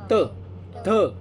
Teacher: जे वर्ण उच्चार करत असताना जिभेचा किंवा जीभ दातांच्या मागच्या बाजूला लागेल ना त्यांना दंत्य वर्ण म्हणायचं